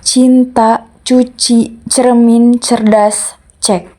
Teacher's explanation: Konsonan letup tak bersuara voiceless palatal plosive. Ciri artikulasi konsonan C yaitu tempat artikulasinya palatal, cara artikulasinya letup, plosif atau letup geser apliset, dan getar pita suaranya tak bersuara. · tempat artikulasinya palatal, dan suaranya tak bersuara